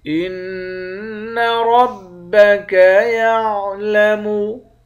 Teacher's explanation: را کو موٹا پڑھیں گے